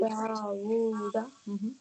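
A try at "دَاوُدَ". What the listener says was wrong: So only the wow we stretch, and no dal we stretch too. Every time After fatha and alif comes, right? Whenever we have a fatha and after that is a khali alif.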